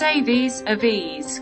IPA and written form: ˈeɪviːz (Aves)